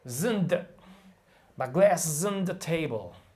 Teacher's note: Is becomes z. On becomes n. And the becomes the.